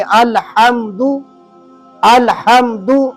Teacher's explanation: تو لہذا تجوید کے اندر جب آپ نماز پڑھیں گے تو پھر الحمد نہیں پڑھیں گے، الحمد الحمد، یہ ہاں آپ کو حلق سے نکالنی پڑے گی